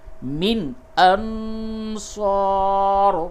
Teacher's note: نون ساکن کے بعد صاد ہے، اخفا ہوگا، یعنی نون کی آواز کو ناک میں چھپا کر پڑھیں گے · نون ساکن کے بعد حمزہ ہے، اس جگہ پہ اظہار ہوگا، یعنی نون کی آواز کو بالکل ظاہر کر کے پڑھیں گے